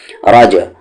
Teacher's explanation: यहाँ पर कलकला हो रहा है यानी कि बाउंसिंग साउंड